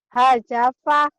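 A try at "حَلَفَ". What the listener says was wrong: Hajapa bukan ja itu malam. Halafa. Halafa.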